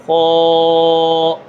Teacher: موٹا پڑھنا ہے، یعنی زبان کی جڑ اوپر کی طرف اٹھانی ہے